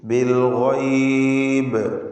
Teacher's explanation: ഗൈനിൽ തഫ്ഖീം കൊടുക്കുക. അന്ത്യത്തിൽ സാക്കിനത്തായ ബാ അതിന് ഖൽഖല കുബ്റ നൽകി വ്യക്തമാക്കി അതിനെ വഖഫിൽ ശബ്ദം കേൾപ്പിച്ച് ഉച്ചരിക്കുക.